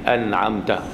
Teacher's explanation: Izhar pasal nun dengan ain tu jauh makhraj dia.